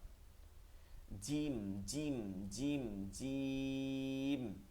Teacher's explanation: জিম বলার সময় কোন জির জির আওয়াজ হইতে পারবে না কোনভাবেই হইতে পারবে না জিম জিম জিম জিম এরপরেরটা হচ্ছে সিন · যেমন আমরা জিমের যদি পিকচারটা দেখি, জিমটার মধ্য বরাবর তালুতে গিয়ে লাগবে, কোনো ফাঁকা জায়গা থাকবে না, জিহ্বার মধ্যখান আর তালুর মাঝে কোনো ফাঁকা থাকতে পারবে না এবং শক্ত হয়ে যাবে